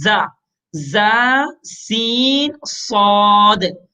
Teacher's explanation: زا میں صفت صفیر ہے. صفیر کا مطلب سیٹی.